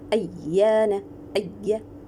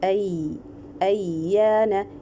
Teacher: The ya, it is an open makhraj and it is having rakhava.